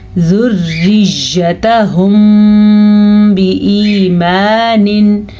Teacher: जिनको समझ नहीं आई तो मैं फिर बता दूं, यहाँ पे वही कायदा हो रहा है जो यहाँ पे हो रहा था, यानी कि मीम साकिन के बाद बा आ गया है तो यहाँ पे हम दोनों होंठों को बंद करके गुन्ना करेंगे · ज़ुर्रियत, ता को लंबा नहीं करना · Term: इख्फाई शफ़ी